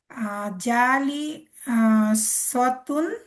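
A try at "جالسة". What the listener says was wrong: সতুন না, সাতুন, সিন আছে তো, জালি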